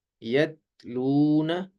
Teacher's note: تا کی آواز باریک اور بغیر جھٹکے والی ہوتی ہے